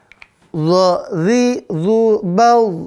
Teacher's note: Udaranya tertahan tuh. Maka dia jahar.